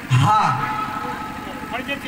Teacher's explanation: তাদের মধ্যে একটু বলি কয়েকজন, হামস, এই যে তা আর কাফ, এই তা আর কাফ দুটো হরফে হামসের পরিমাণ কিন্তু কমাতে হবে। যেমন আপনি হায়ের মধ্যে যে হামস আদায় করবেন, হা, এই যে বাতাসটা বয়ে যাওয়া